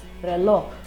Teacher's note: The word reloj, people often tend to say it so softly that you almost don't hear the final letter J.